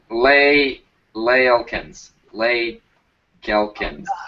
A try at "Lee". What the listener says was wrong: Pretty sure that's pronounced Lee, not Lay. It is Lee.